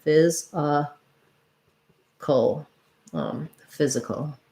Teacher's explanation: we have basically almost no vowel or or schwa for the letter a because we have our dark syllabic l at the end